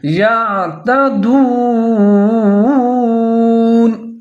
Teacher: یہاں پر یا کو عین کے ساتھ ملا کے پڑھیں گے اور عین کو ظاہر کر کے پڑھیں گے